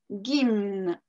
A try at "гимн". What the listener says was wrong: Oh, mais tu viens de le faire parfaitement, gimn.